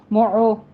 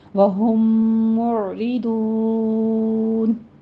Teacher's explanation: آئین وسط حلق سے ادا کرنا ہے، اس کے اوپر قلقلہ نہیں کرنا ہے۔ اس کی پریکٹس کیجیے گا کیونکہ آئین کے اوپر بہت ساری بہنوں کا میں قلقلہ سن رہی ہوں، معو ایسے پڑھتے ہیں، تو آپ نے تھوڑا سا منہ کو کھولیے، ہونٹوں کو آپ نے گول رکھنا ہے تاکہ زمہ ادا ہو۔